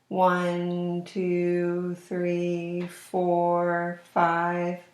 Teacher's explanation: my voice was kind of slow at the same pitch and the words kind of ran together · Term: chant talk